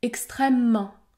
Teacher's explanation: également disparaître à l'intérieur des mots comme dans le mot extrêmement le E disparaît dans ce cas je prononce un m long